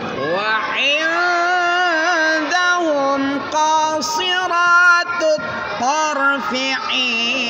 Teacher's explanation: Ko-nya yang panjang, si-nya pendek.